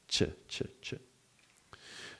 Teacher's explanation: The ch sound is a voiceless, so it means there is no vibration of the vocal cords. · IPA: /tʃ/